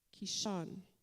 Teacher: the pronunciation is mostly on the second syllable